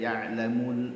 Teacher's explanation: Lalu muljahra, lamnya itu sukun, tidak boleh dipantulkan dan tidak boleh mati seperti syiddah. Ya'lamul tidak boleh ya, ya'lamul, mengalir lamnya sedikit saja karena dia punya sifat tawassut.